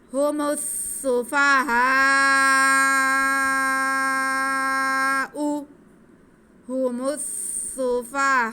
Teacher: تو یہاں پہ مد متصل ہوگی، تو اسے ہم 4 الف کے برابر کھینچیں گے